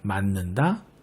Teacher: 먼저 맞는다에는 먼저 지읒이 음절 끝에 올 수 없으니 음절의 끝소리 규칙을 적용하여 디귿이 와야겠죠. 그리고 이 디귿이 바로 뒤음절의 첫 소리인 니은의 영향을 받아 비음, 니은으로 바뀌는 현상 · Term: 비음화